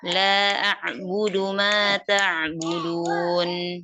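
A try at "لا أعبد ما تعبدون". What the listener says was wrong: Ini dipanjangin aja. La-nya mad jaiz. Ma-nya juga sama ya. Mad jaiz juga. Dipanjangin. Ma-nya sama dengan la. Panjangnya.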